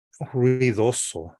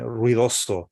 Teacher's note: But ruidoso, the R and the UI, that closed vocal diphthong, right? It has this kind of like tightness to it, right?